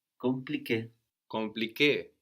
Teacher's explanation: So this M of con is also quite silent, not really pronounced.